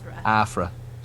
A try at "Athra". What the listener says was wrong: With a TH, not an F.